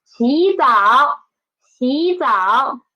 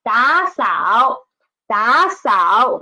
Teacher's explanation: We should change the former third tone into second tone, right? So 洗澡, there are two third tones.